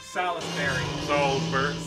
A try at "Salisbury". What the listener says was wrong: No, it's just Salisbury. There is no I in it. Yeah, Salisbury.